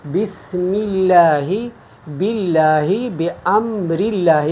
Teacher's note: شکل میں تو ہم پر پڑھتے ہیں تفخیم کے ساتھ، لیکن زیر اگر آ جائے تو پھر ہم اللہ کے نام کو باریک پڑھتے ہیں اور ہم پر نہیں پڑھتے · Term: ترقیق